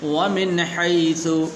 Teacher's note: یہاں پر بھی غنہ نہیں کریں گے اس لیے کہ آگے حا حروف حلقی میں سے ہے